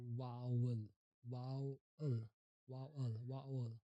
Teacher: Start with a strong V sound, move into a diphthong. O, E, O, E, O.